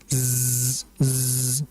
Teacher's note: memiliki sifat safir yaitu sifat yang seperti ada suara siulan yang kuat seperti contohnya z z nah ada suaranya zza kata para ulama disebutkan yusybihiu nahli bahwa huruf za itu menyerupai suara nahl Al yaitu apa? · Jadi hati-hati di surah Az-Zalzalah pada huruf za, karena za ini merupakan huruf yang keluar dari lidah bagian ujung menempel dengan gigi seri bagian bawah. Dan padanya memiliki sifat safir, yaitu sifat yang seperti ada suara siulan yang kuat.